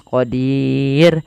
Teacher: ro di sini kita hukum dengan ro yang tipis